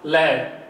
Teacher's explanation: जो हवा है वो जीवा के दोनों ओर से होकर निकलती है, बगल से निकलती है, इसलिए इसे पार्श्विक वर्ण कहते हैं।